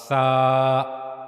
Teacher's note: उसके बाद सा के बारे में हमने पढ़ा कि जबान की नोक का ऊपरी सिरा ऊपरी हिस्सा जो जबान की नोक का ऊपर वाला हिस्सा है यह ऊपर के दो अगले दांतों के किनारों के साथ जाकर मिलता है तो फिर सा अदा होता है। सा जबान की नोक के सिरे को आप ऊपर के जो दो अगले दांत हैं उनके किनारों पर रखेंगे तो वहां से सा अदा होगा। · اس کے بعد سا کے بارے میں ہم نے پڑھا کہ زبان کی نوک کا اوپری سرا، اوپری حصہ، یہ جو زبان کی نوک کا اوپر والا حصہ ہے یہ اوپر کے 2 اگلے دانتوں کے کناروں کے ساتھ جا کر ملتا ہے تو پھر سا ادا ہوتا ہے، سا۔ زبان کی نوک کے سرے کو آپ اوپر کے جو 2 اگلے دانت ہیں ان کے کناروں پر رکھیں گے تو وہاں سے سا ادا ہوگا،